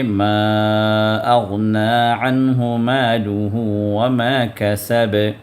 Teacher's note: عین کو وسط حلق سے آپ حرف کو نکالیے